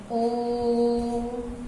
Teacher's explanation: तो पहले ओम जब बोलते हैं तो उसमें खिंचाव होता है, तो यहाँ पे प्लुत स्वर होगा। जैसे हम किसी को बुलाते भी हैं तो खींच के बुलाते हैं ए, इस तरह से, तो यहाँ पे प्लुत स्वर होगा।